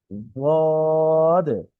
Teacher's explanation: এই হরফের উচ্চারণ দেখা যাচ্ছে জিহ্বার কিনারা মাড়ির দাঁতের সঙ্গে লাগিয়ে। জিহ্বার কিনারা হচ্ছে আমাদের দাঁতের যে কিনারা আছে, জিহ্বার যে কিনারা, এটা মাড়ির দাঁতের সাথে লাগবে।